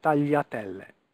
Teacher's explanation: When you say this sound in Italian, you don't put the tip of your tongue there. You put all of your tongue against the roof of your mouth, not just the tip.